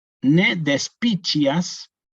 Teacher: La C con la I en latín eclesiástico se pronuncia como una chi